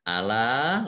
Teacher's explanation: Ya, ala lam fathah alif mat tobi'i, tetapi karena bertemu dengan huruf alif maka mat tobi'i berubah menjadi mat jaiz munfasil, ya, karena di kata yang berbeda. Dibaca panjang boleh 2 harokat, 4 atau 5 harokat.